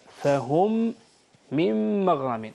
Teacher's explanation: عندنا ميم ساكنة في ميم متحركة، إدغام، إدغام نون ساكنة في ميم متحركة، في النهاية نفس النطق يعني ميم مشددة.